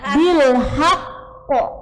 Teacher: Maka ketika waqaf harus bil haqqi, ditekan, kemudian qafnya qalqalah.